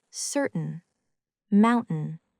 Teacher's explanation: This happens most often before the letter N. The sound is made in the throat by briefly stopping the airflow, as in certain, mountain. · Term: glottal stop